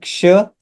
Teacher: क आणि श या दोघांचे मिक्सिंग आपल्याला इथं पाहायला मिळते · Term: जोडाक्षर